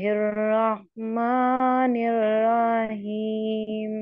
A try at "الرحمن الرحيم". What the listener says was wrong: आपका हा ठीक नहीं है, हा ठीक नहीं है। الرحمن الرحيم حيم. आपको हा की प्रैक्टिस करनी पड़ेगी, आपका हा ठीक नहीं है।